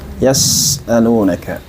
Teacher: Ya mengalir nafas, ya. Kemudian sin juga memiliki desisan atau yang dinamakan sebagai sifat shafir · Huruf sin itu memiliki sifat rikhwah yang harus kita alirkan suara.